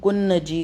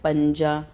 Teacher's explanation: ہم نے نون کی آواز کو جو ہے اپنی ناک میں تھوڑا سا چھپایا ہے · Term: اخفا